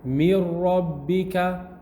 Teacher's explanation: The tongue is not touching the noon place, and the ghunna is also not there. So this is called full idgham, because all of the noon has gone.